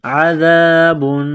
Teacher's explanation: زال کو نرم کرنا ہے، زبان تھوڑی سی باہر نکالیں گے زال کو پڑھتے وقت